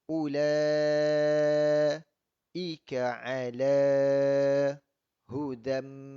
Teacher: Tanwin bertemu dengan mim yang bersabdu. Itu adalah idgham ma'al gunnah, maka wajib didengungkan dengan 2 harakat.